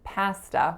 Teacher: in Canada I grew up saying pasta with an a sound not the sound that you heard in the American version